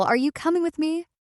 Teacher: The voice rises at the end to express uncertainty or doubt.